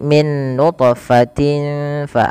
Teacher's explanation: cara membacanya tanwinnya samarkan ke Fa tidak lagi dengan jelas suara tanwinnya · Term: ikhfa